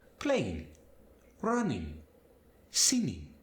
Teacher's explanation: Quite often, when a native Spanish speaker is speaking English, the G is going to just kind of fade away from words.